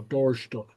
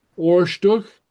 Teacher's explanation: The DH at the end is kind of a soft guttural